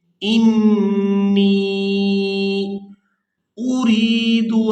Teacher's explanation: نون کو جب دوسری دفعہ یائے مدہ کے ساتھ ملائیں گے تو کھینچ کر ادا کریں گے۔